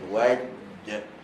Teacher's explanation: tengah-tengah lidah, tekankan ke langit-langit atas. Okay, dia mesti rapat. So nak pastikan dia rapat supaya tak ada laluan angin. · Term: huruf jim